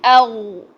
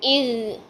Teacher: پیچھے زبان کی جڑ اوپر اٹھا لیں اور پھر غین کو موٹا کریں. آواز جو ہوگی منہ سے باہر نہیں نکلے گی بلکہ پیچھے حلق کی طرف پھینک دیں، پھر غین خود ہی موٹا ہو جائے گا.